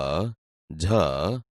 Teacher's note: અહીંયા બોલતા તમે જોશો કે આપણી જીભ તાળવાને અડે છે, તેથી તે તાલવ્ય વ્યંજન છે